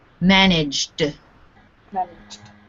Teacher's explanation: G is a voiced consonant that means the sound that the E makes is D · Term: D sound